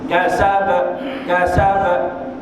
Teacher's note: Wajib dibunyi kasab. Ekor di belakang tu bunyi detakan, lantunan. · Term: qalqalah kubra